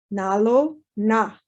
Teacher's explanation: So the na also gets the tongue pulled back a little bit more so that it's a retroflex na, a little bit further back in the mouth where the tongue hits.